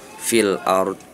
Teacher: Ini ro-nya maksudnya adalah ro tafkhim. Ketika dia berharokat sukun, sebelumnya berharokat domah atau fathah, maka si ro tersebut tafkhim, ada sedikit tebal.